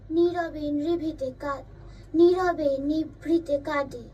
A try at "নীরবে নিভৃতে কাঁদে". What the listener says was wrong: নিভৃতে বলবি না কিন্তু, নিভৃতে। ভয়ের উপর কিন্তু অত জোর পড়বে না। নিভৃতে দুটো ভয় নেই কিন্তু, নিভৃতে, নিভৃতে। ভয়টি ছোট, হালকা, নিভৃতে। নীরবে নিভৃতে কাঁদে।